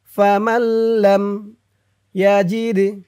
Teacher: এই মিম দিয়ে এই তাসদিদ ওয়ালা লামকে ধরবে মাঝখানে নুনটা বাদ যাবে